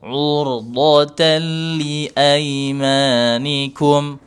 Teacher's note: huruf ra sukun sebelumnya dhammah ditebalkan tetap dijaga monyongnya bibir biar tebal sambil dinaikkan pangkal lidahnya